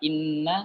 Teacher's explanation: keluarnya eh ghunnah itu sempurna dari rongga hidung kita